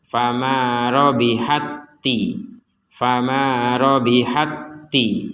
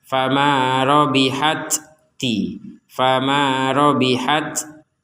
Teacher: Kemudian di ta yang kedua ada tanda tasdid. Artinya ta yang pertama dimasukkan kepada ta yang kedua. Sehingga cara bacanya fama robihatti.